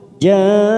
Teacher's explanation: Nun yang bertasdid ini mempunyai hukum gunnah musyaddada, maka kita tekan 3 ketuk.